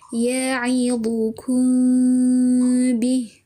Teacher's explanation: Dibaca dengung samar-samar pertengahan antara mim dan ba. Jadi bibirnya tidak sepenuhnya dirapatkan, tapi diberi rongga satu helai kertas. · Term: ikhfa syafawi